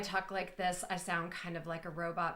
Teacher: So if I talk like this, I sound kind of like a robot because my words don't go up or down. They just kind of stay the same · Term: completely flat language